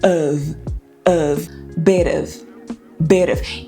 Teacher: esse O do of, não é O, não é of, é of com schwa.